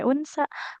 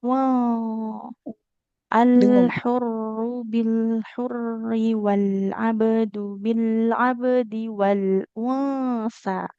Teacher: Nah, enggak boleh unsa. Kalau nun sukun bertemu sa dia ikfa ya. Jadi eh bunyi nunnya enggak jelas, tidak un tapi wurru bil hurri wal abdu bil abdi wal unsa.